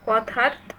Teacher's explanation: কথার থ অঘোষ মহাপ্রাণ